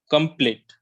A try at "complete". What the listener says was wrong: No, not complete. It's complete. Try it after me. So when you take care of this pronunciation O sound, okay, record yourself more. Computer. Complete. I want you to take care of this.